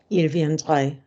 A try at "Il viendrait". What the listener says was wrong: Don't fall off the consonants. Il viendrait.